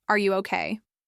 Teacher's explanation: It sounds like I'm doubtful, maybe even annoyed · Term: falling tone